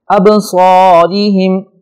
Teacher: ابصارہم، یہ با حروف قلقلہ میں سے ہے جنہیں ہم نے قطب و جدن میں یاد کیا تھا، لہٰذا اس پہ ہلکا سا جھٹکا کر کے پڑھیں گے۔ ابصارہم، را کے نیچے زیر ہے، اسے ہم باریک پڑھیں گے